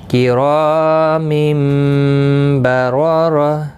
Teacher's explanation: نون ساکن اور تنوین کی آواز کو بدل کر میم سے پڑھتے ہیں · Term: اقلاب